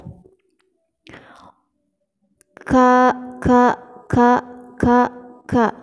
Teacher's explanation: Ini namanya huruf kaf, dan dia huruf kaf ini diberi harakat fathah, dibaca menjadi ka. Makhraj huruf ka yaitu di pangkal lidah ke depan sedikit dari makhraj qaf